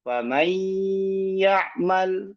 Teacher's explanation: Ya, masih ada gunnah yang keluar dari rongga hidung. Fa may ya'mal ini idgham naqis.